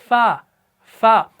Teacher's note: अच्छा, एक और चीज़ इसमें याद रखिएगा कि ये जो फ़ा है ना, इसके अंदर आपने सख्ती बिल्कुल नहीं करनी। ये हरफ जो है ना, ये सख्ती के साथ अदा नहीं किया जाता। इसमें पस्ती होगी, इसमें ज़ौफ़ होगा।